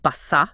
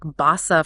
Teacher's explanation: they'd use a double s for a really strong s sound like basa for low and a single s for a softer almost like a z sound